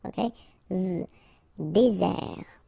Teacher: Désert. And really this Z sound just because you get one S between the two vowels